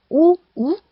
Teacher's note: 입술이 원처럼 된다. 발음할 때 입술을 동그랗게 오므려서 소리내는 것이었습니다. 원순 모음, 입술을 둥글게 오므려서 소리냄.